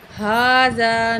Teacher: ہا کھڑا زبر ہا ایک الف کے برابر کھینچیں گے کھڑی زبر کو